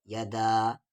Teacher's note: دال کے ساتھ الف مدہ ہے اور دال کو کھینچیں گے 3 سے 4 الف کے برابر